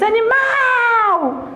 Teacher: A sílaba tônica é a última.